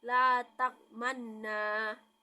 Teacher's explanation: ismam yaitu menggabungkan domah pada sukun